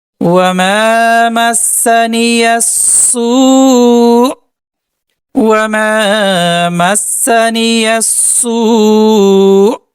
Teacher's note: اب یہاں پر ہم وقف کریں گے تو واو کو ٹانتے ہوئے حمزہ کے ساتھ ملا کر جھٹکا دیں گے